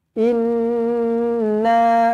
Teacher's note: Inna, nun sabdu dengungkan dua harakat di sini. Inna, jangan inna, tak cukup dua harakat, tak cantik.